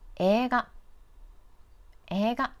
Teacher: In this word, the vowel e and i are placed next to each other, so we extend the e character. Don't read them separately, like 映画, 映画. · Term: long vowel